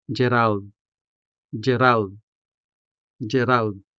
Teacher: This may be a Western name, but the native Hiligaynon sounds are clearly audible with the rolling R and the native Hiligaynon vowel A